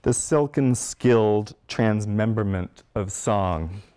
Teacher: the silk and skill give us phonemes that are held in almost a kind of mirror relationship and alliteration: the i-l-k, k-i-l